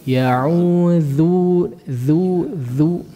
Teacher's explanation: Lihat, ya'udzu ya, zalnya tipiskan, antum terlalu tebal. Jadi dha nanti.